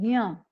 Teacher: आप बोलोगे जब तो आपके नाक से ये ध्वनि आएगी ज्ञ की · उसी प्रकार से जब ज्ञ का हम उच्चारण करते हैं तो ज्ञ नहीं बोलते हैं, ग और य नहीं होता है, वो ज और य होता है। तो हम इसको उच्चारित इस प्रकार से करते हैं ज्ञ।